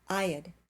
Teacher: I had becomes I'd. Had here is not the main verb. It's a helping verb, so it's unstressed.